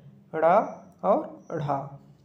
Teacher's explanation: जिस वर्ण के उच्चारण में जिह्वा झटके से ताल में स्पर्श करके पुनः वापस आ जाते हैं उन्हें द्विगुण या उत्क्षिप्त वर्ण कहते हैं।